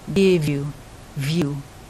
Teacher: And the V slides over on the U.